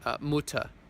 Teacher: It's kind of like an English sound at the end of a word, a British sound, where it's just kind of dropped. Mutter, that's mother, but the R isn't pronounced.